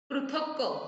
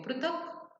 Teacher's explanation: Second में मैं क कंप्लीट बोल रही हूँ, फर्स्ट में हाफ बोल रही हूँ, जैसे इंग्लिश में हम लोग साइलेंट बोलते हैं ना, वैसे है ये वाला, ओके।